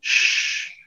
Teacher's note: You see, shh, you make the air go past your tongue and the alveolar ridge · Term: consonant sound, shh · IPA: ʃ